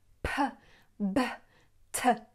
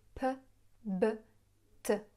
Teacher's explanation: the P, B and T sounds. She pronounces them in the English way, i.e. by blowing a lot.